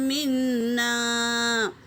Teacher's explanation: فَأَنجَيْنَاهُ وَالَّذِينَ مَعَهُ بِرَحْمَةٍ مِّنَّا۔ نون پر تشدید ہے تو غنہ ہوگا، اور میم پر بھی تشدید ہو تو غنہ ہوگا